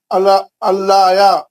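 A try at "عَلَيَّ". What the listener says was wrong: अल्लाया नहीं है, देख के पढ़िए। अलैया यहाँ पे तस्दीद है, या को 2 बार पढ़ना है, या को 2 बार पढ़ना। अलैया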